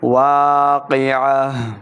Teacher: جب تا کے اوپر وقف کریں گے تو اس کو ہا میں بدل کر پڑھنا ہے اور ہا کو ساکن کریں گے.